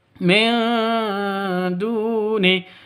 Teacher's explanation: Zaimtum min duni, min duni (seorang nun sukun bertemu dengan dal, samar-samar, dinasal, siapkan surat dal karena itu Ikhfa Haqiqi).